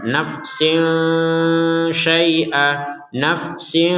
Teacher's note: samar nah samarnya tanwin ketemuin ini disertai dengungan juga nafsin nafsin Jadi ada dengungannya walaupun tidak dengung 100% · An nafsin syai'a, ada tanwin bertemu shin, maka kita membacanya dengan samar. Nah, samarnya tanwin ketemu shin ini disertai dengungan juga.